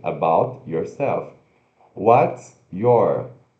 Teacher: juntando os sons do t e do Y nessas expressões que a gente viu na conversação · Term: linked Sounds